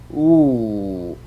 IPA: ʊ